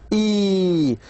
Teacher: So the lips are spread and the sound is long. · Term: long vowel